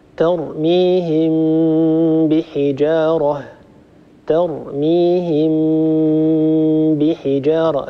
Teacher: تكلم عن حكم الإخفاء وذكر أن الميم تخفى عند حرف الباء، يعني إذا وجدنا ميما ساكنة وهذه الميم الساكنة بعدها حرف الباء فإن الميم نخفيها عند هذه الباء بالكيفية التي ذكرتها لكم في الحلقة الماضية، وهو أن نطبق على ميم ونفتح على باء مع غنة طويلة